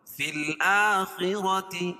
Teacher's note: خا کو پور پڑھیں گے، را کو پور پڑھیں گے، کیوں؟ خا حروف مستعلیہ میں سے اور را کے اوپر زبر ہے.